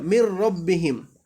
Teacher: মিম নুন মিম রয়ের সাথে মিলাই পড়তেছি মির, কিন্তু গুণা করতেছি না